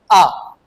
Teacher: जैसे ही आ का उच्चारण करते हैं तो हमारा मुख पूरी तरीका से खुल जाता है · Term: विवृत स्वर